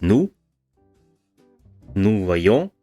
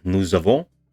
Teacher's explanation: So, reading out nous, there should be an S at the end, but there is not. However, the S reappears or survives, depending on how we want to look at it, in the case when you have vowels after one another